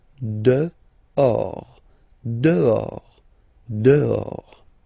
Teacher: this H in French doesn't exist phonetically, so you don't pronounce it. Dehors.